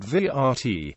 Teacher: the syllabic R in Serbo-Croatian word vrt, garden